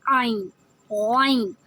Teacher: سانس کی نالی کی شروع سے نکالتے ہیں، جہاں سانس کی نالی کی شروع ہوتی ہے یہ شروع کا پارٹ ہوتا ہے جہاں سے ہم عین کی آواز نکالتے ہیں.